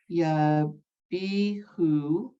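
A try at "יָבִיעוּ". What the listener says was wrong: Yabi'u, the ayin is silent.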